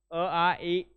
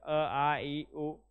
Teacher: हवेचा मार्ग अडवलेला नसतो तो खुला असतो उच्चारावेळी तोंड उघडे असते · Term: स्वर